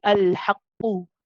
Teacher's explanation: The qalqala of the first qaf is dropped.